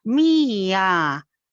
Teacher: hace 2 movimientos descendentes, uno para cada sílaba